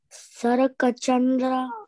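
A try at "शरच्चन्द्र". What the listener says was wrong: No, there is no ka. Sarachandra. No ka, there is no ka. After ra, immediately you go to cha. There is no ka.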